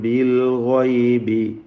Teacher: ബിൽ ഗൈബി ഗൈനിന് പൂർണ്ണമായ തഫ്ഖീമാണ്